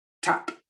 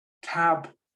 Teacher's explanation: always a little bit shorter before the p before the unvoiced one so tap has a shorter sound than tab